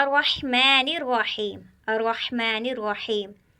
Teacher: रा मोटी पढ़ी जा रही है क्योंकि रहमान की रा के ऊपर ज़बर है और रहीम की रा के ऊपर भी ज़बर है, और हमने कायदा पढ़ा रा के ऊपर ज़बर या पेश हो तो रा पुर पढ़ी जाती है।